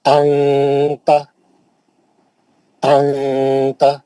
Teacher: کیسا کریں گے؟ نون کی آواز کو ناک میں لا کے چھپا لیں گے اور غنّے کر کے پڑھیں گے.